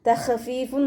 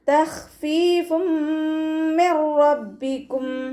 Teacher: തഖ്ഫീഫും മിർ റബ്ബിക്കും. ഖ ഇസ്തിഅലാൻ്റെ ലെറ്ററാണ്. നാവിൻ്റെ ബാക്ക് മുകളിലേക്ക് പൊക്കി കൊടുത്തിട്ട് തഫ്ഹീം ചെയ്യുക. ഖൽഖല ലെറ്റർ ഇല്ലാത്തത് കൊണ്ട് നമ്മൾ ഹാഫ് സുക്കൂന് കൊടുക്കാൻ ശ്രദ്ധിക്കുക.